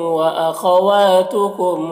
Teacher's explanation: واخواتکم خا کو پر پڑھنا ہے حروف مستعلیہ میں سے